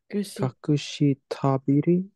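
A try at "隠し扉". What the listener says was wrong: It is to. B was correct. And then it's ra. Tobira. Kakushi tobira.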